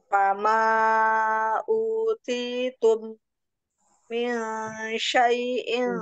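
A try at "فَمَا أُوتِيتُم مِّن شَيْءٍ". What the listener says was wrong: kurang tahan Umi. Uti tum mim sukun bertemu mim, ditahan ya dengung. Idgum mim.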